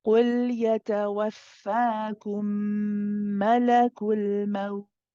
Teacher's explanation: when we pronounce this waw, we have to stay on it longer than we stay on the lam. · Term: rakhawa letter